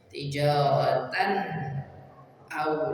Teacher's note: ada tanwin bertemu hamzah, dibaca jelas izhar, izhar halqi, dibaca jelas.